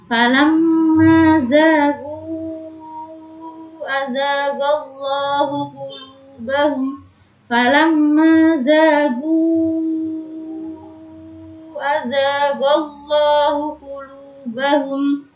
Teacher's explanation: Jangan lupa tadi zagu azagallah dibaca panjang 5 harokat karena dia termasuk mad jaiz munfasil bertemu dengan apabila ada huruf mad bertemu dengan hamzah di lain kalimat dibaca sampai 5 harokat.